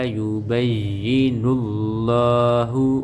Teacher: لفظ اللہ کی لام کو موٹا کر کے پڑھیں گے